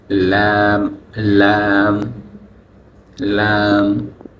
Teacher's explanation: 8 নম্বর মাখরাজ হচ্ছে জিহ্বার আগার কিনারা সামনের উপরের দাঁতের মাড়ির সঙ্গে লাগিয়ে